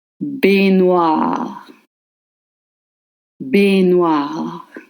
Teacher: Remember, A-I makes the sound A, and the cluster GN makes the same sound as in onion, the N, and the cluster of vowels OI makes the sound W, same as what, and you barely voice the E at the end